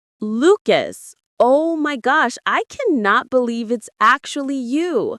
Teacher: voice rises quickly at the beginning